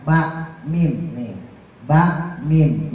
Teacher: Kalau ba sama mim itu bagian luar, ba mim nih, ba mim, jadi bibirnya ketemu